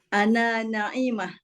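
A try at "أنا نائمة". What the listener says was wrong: Panjang sikit. Ana naimah. Bentuk dia fa'il. Bukan na'iyah, bukan ain. Kalau na'imah orang yang menikmati, orang yang dapat nikmat. Tapi dengan hamzah, na'imah. Sebab ada orang nama na'imah tu kan, tu dengan ain. Bukan kata-kata dia kaki tidur.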